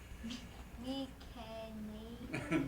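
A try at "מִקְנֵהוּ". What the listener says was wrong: No, it's not a vocal savant. Meek. And then you gotta put the emphasis on the sere.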